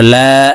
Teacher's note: লামের উপরে খারা জবর আছে লাম কে এক আলিফ টেনে পড়বো